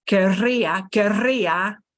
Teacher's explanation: this double R that you hear as querría, with a strong trill, is from that ER, the E from the ER of querer going, oh, bye-bye.